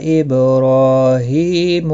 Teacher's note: را کے اوپر کھڑی زبر ہے، ہا کے نیچے کھڑی زیر ہے، دونوں کو ایک ایک الف کے مقدار کے برابر کھینچ کر پڑھنا ہے